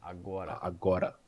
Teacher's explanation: The accent would be in the second syllable